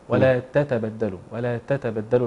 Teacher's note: في قراءة حفص نخلص التاء من التاء